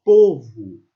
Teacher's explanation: Esse u é uma vogal entre o o e o u.